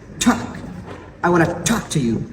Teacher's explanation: this word begins with t sound, so it should be aspirated.